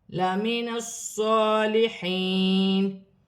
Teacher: صاد مشدد ہے، موٹے حروف میں سے ہے، جماؤں کے ساتھ ادا کیا جائے گا، کھڑی زبر ایک الف کی مقدار کھینچ کر بھی پڑھا جائے گا